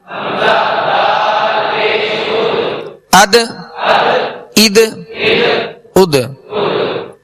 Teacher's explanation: دال بھی حروف ماشاء اللہ حروف قلقلہ میں سے ہے، اور اس میں قلقلہ کرنا ہے، یعنی آواز لوٹتی ہوئی ہے، آواز میں جنبش ہو. حمزہ دال زبر اد، حمزہ دال زیر اد، حمزہ دال پیش اد، اد اد اد.